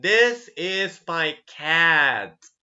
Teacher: Every time we speak, we have certain voice volume. But as we finish the sentence, the volume decreases and finishes and fades away.